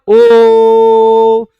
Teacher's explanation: शुरू से लेके एंड तक हम एक ही ध्वनि का उच्चारण कर रहे हैं।